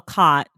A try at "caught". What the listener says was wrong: Bing. You said the same thing.